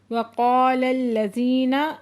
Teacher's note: وقال الذین قا پہ علی مدہ دو حرکت کھینچ کے پڑھیں گے، لام کو لام کے ساتھ ملا کے پڑھیں گے اور لام مشدد ہے سختی سے بھی پڑھیں گے